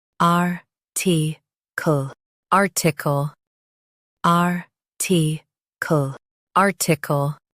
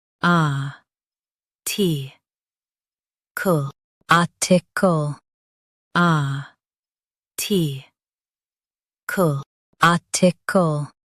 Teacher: In US, stress r and keep t quick. In UK, stress a instead.